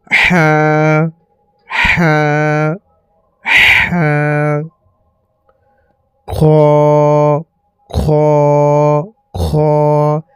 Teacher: এই অক্ষরটি হচ্ছে বড় হা। এই বড় হাটিকে একদম হালাক থেকে বেশি পরিমাণ হাওয়া বের করে পড়িতে হবে। · এই খ অক্ষরটি মুখের শেষ অংশ একদম ভিতরের অংশ থেকে বের হবে। খ, যেই জায়গায় আলাজিবা আছে আমাদের সেই জায়গা থেকে এই খ অক্ষরটি বের হবে।